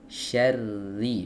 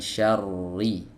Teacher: huruf ra di sini sepakat para ulama harus dibaca tipis tidak boleh dibaca tebal